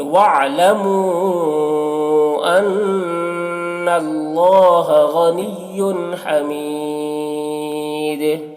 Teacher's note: حرف مد کے بعد سکون وقف کی وجہ سے ہے، اس لیے یہاں پر مد عارض وقفی ہوگا